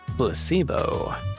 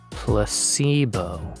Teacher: the stress is on the middle syllable